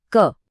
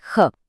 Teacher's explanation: ख बोलते वक्त मुंह से एक हवा का झोंका सा निकलता है ना?